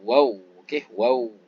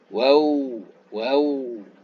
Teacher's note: Ketika nak sebut huruf waw ini, kita muncungkan sedikit dia. Muncung depan, atas bawah, macam nak cium tu.